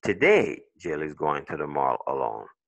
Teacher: si je mets l'accent sur today, le message, change